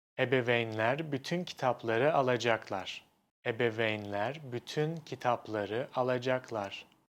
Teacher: The difference is that in the Turkish sentence, there are no strong beats. Nothing is like emphasized or stressed. Every single syllable gets almost the same time.